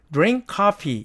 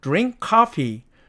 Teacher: 자, 그런데 이 경우에 이 발음 기호를 보니까 크하고 크가 만나요. 그러면 앞에 있는 크가 사라진다 그랬죠?